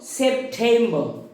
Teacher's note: আমরা আগের দিন শিখেছি যে টয়ের উচ্চারণটা ব্রিটিশদের ক্ষেত্রে ঠ হয়ে যায়